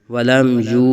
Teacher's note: یو، ولم یو، یہاں بھی اظہار شفوی ہو رہا ہے اور آگے واو ساکن سے پہلے پیش واو مدہ ہو رہا ہے، یہاں ایک الف تک کھینچیں گے